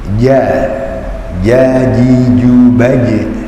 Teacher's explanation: Tidak boleh ada suara cek cek atau desisnya. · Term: jim